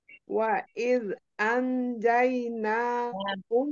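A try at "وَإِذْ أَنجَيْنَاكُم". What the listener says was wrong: dalnya jangan z tapi dialirkan rokhoah. Ya, betul.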